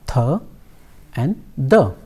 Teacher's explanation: the tip of the tongue touches to the upper teeth and the sound are produced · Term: dental consonants